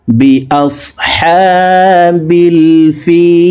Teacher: ফি 3 আলিফ টেনে লামকে সাকিন করে ফেলবো, কারণ মদের হরফের বামের হরফে ওয়াকফ হইলে মধ্যে আরজি 3 আলিফ টানিয়া পড়িতে হয়।